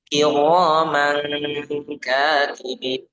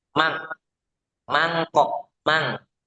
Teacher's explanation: ketika nun mati atau tanwin bertemu kaf atau bertemu qaf, maka ini dibaca ang. Bedanya kalau qaf itu angnya tebal, kalau kaf angnya tipis. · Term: ikhfa